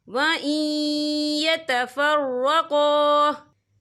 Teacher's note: गफ़ूरर रहीमा वइन यतफ़र्रक़ा, ये देखिए वइन, यहाँ नून साकिन है, नून साकिन के बाद जो है या आ रहा है और या जो है हुरूफ़ यरमलून में से है, तो यहाँ पर इदगाम होगा, तो हम इसे थोड़ा सा गुन्ने के साथ पढ़ेंगे।